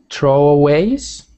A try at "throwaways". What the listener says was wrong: Yep, so that, make sure you've got the TH sound. It is not throwaways, it's throwaways. Throwaways. You don't ever want it to sound like like tro. It must always be throwaways. And try not to let your tongue roll when you make the R sound now. So instead of throwaways, make it throwaways.